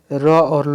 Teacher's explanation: र और ल को दंत मूल कहते हैं